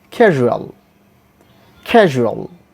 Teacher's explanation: primary stress is given in the first syllable ka, then ja, then o, then a and la.